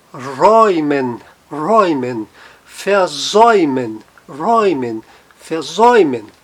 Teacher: A tremado e o U tem som de OI. E a regra, apareceu o A tremado e o U, tem o fonema de OI